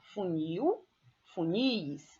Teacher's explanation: Funil, a sílaba tônica é no nil, então eu tenho aí uma oxítona